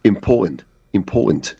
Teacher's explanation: they don't pronounce the T's